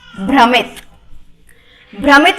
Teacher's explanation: भ्रमित में एक अक्षर है भ, तो हाँ हमें भ मिला जो कि ओष्ठ से बोला जाता है। उसके बाद म भी है जो कि ओष्ठ से बोला जाता है।